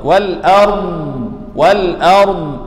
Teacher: Jangan wal ard dal, salah. Wal a hamzah nipis, ra ini tebal, dad tebal, dan ada panjang di huruf dad.